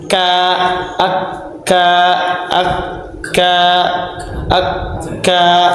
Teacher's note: makhraj huruf kaf adalah dari pangkal lidah lebih bawah, dari makhraj qaf lebih ke depan ke arah mulut. Jadi dia itu lebih ke depannya lagi.